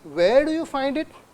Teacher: Did I say question mark anywhere? The intonation, it's a rising intonation.